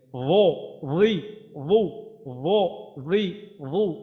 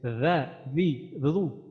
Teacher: এটা মোটা হবে, মোটা হইলে রি রি রি, আর হচ্ছে রালজের রি, রালজের রি, এটাতে আমাদের জিহ্বাটা ফ্ল্যাট থাকবে। কিন্তু র যখন উচ্চারণ করবো তখন জিহ্বাটা আমাদের, জিহ্বার গোড়াটা উপরের দিকে উঠবে।